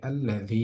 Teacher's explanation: এখানে এসে একালিক পরিমাণ টান হচ্ছে দি শব্দটার মধ্যে। জি এখানে টান হওয়ার কারণ আমরা জানি যে জের এর বাম পাশে যজমওয়ালা ইয়া যখন আসে তখন আমরা একালিক পরিমাণ টেনে আমরা উচ্চারণ করি।